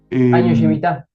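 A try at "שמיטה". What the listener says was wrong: El año Shemitah es. Shemitah. La E no se pronuncia. Es Shemitah. Es sin E. Shemitah.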